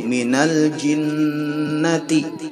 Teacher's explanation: ada tekanan pada huruf nun yang bertasydid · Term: bacaan ghunnah, ghunnah